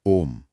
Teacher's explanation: और म की जो ध्वनि है वो नाक से गूंजनी चाहिए।